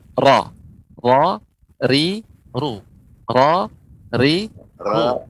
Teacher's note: Nah untuk roh pengucapannya dia tidak banyak getaran ya